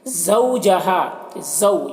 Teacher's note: یہاں پر واو لین ہے، اس واو لین کو نرم آواز کے ساتھ جلد پڑھنا ہے۔